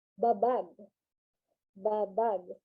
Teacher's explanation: it is in a constant rising intonation